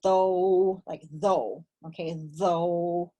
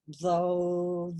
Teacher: your tongue between your teasing though like though okay though but try to keep your tongue between your teeth okay because you want this to vibrate